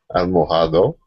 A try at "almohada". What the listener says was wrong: No, termina con A, pero la H no se pronuncia. Sí, la H no se pronuncia. Almohada. Es casi como que podemos borrar la H. Almohada.